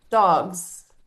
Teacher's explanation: We hear the z sound at the end of dogs